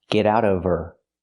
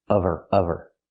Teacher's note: Again, she told him to get out of her house. Now we need the v sound in of because we don't pronounce the h in her. We link the sounds.